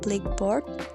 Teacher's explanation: Kecuali dalam bahasa Inggris, misalnya kata blackboard tidak memperlihatkan asimilasi di antara black dan board. Fonem K dari black tidak menjadi fonem G akibat kebersuaraan fonem B yang berikutnya. Dan fonem B tersebut tidak menjadi fonem P akibat ketakbersuaraan fonem K yang mendahuluinya.